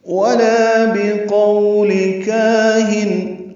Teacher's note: واو ہونٹوں کی نا تمام گلائی سے ادا کریں